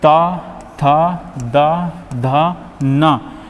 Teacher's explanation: ता वर्ग में वे वर्ण आते हैं जो जीभ के द्वारा दांत से हमारे स्पर्श होते हैं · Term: दंत्य वर्ण